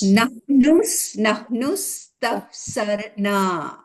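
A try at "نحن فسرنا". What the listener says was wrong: মাশাআল্লাহ, আপু পেরেছেন, আলহামদুলিল্লাহ।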